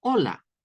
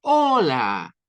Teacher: con más fuerza al principio, en la primera sílaba